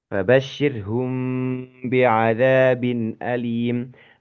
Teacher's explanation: Nah, hukumnya adalah ikhfa syafawi sebetulnya. Artinya ketika mim sukun bertemu dengan huruf ba itu sebetulnya mim itu tidak tidak menutup betul-betul ya, tidak mingkem gitu ya.